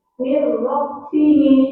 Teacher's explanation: maka nun sukunnya dilewati dan siap-siap masuk ke huruf ro tanpa mendengung. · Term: idgham bila guna